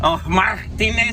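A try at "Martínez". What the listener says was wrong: Martinez, you got to roll the R's. You gotta roll the R's. It's hunting season, and so it's Martinez.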